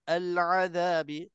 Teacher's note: Pastikan izhar di sini jelasnya lam mati. Jangan kita terlantun ataupun terberhenti. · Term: izhar qamari